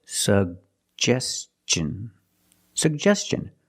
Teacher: put the stress on the second syllable